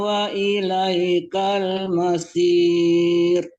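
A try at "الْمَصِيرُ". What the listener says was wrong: Kalau masir itu sin ya. Sod sama sin beda ya. Kalau sod hurufnya tebal, kalau sin hurufnya tipis.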